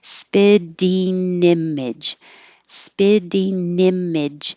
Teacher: i'm making the ing an in so my tongue finishes in the front for an in and then connects to the next um vowel